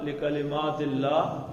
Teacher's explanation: ہا جو گول ہا یہ کہاں سے نکالنی ہے؟ کہاں سے؟ سینے سے جی. لکلمات اللہ ہی، سینے سے نکالیں ذرا.